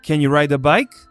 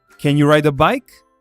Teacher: the stressed words in this sentence are you ride and bike